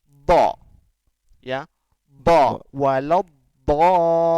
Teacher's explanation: Jadi gesekan antara tepi lidah dengan gigi geraham atas. Jadi Bo, dari belakang pangkal bo, ini menuju ke tepi. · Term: istitolah